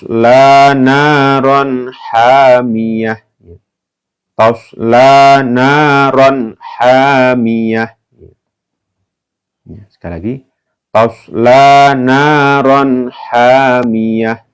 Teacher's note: ketika ta marbutah ya diwakafkan nanti jadi seperti ha